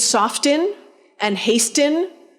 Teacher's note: They all had T's. And then that medial T got lost, so that none of them had T's.